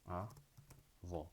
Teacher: Sílaba tônica é a última, né? Então é uma oxítona terminada em O.